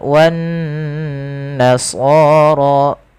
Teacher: Kemudian pada lafal wan nasara kembali lagi kita dapati ada nun yang berharakat tasydid dan dia diwarnai dengan warna hijau. Kita hukumi dengan bacaan gunnah, kita tahan bacaannya sepanjang 2 harakat.